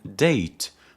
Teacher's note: In date, the tongue blocks the airflow completely before releasing it